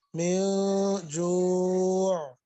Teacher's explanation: اس میں بھی اخفا ہو رہا ہے، ناک میں آواز لے جائیں گے ، جوع، اس میں عین کو وضاحت کے ساتھ پڑھیں گے،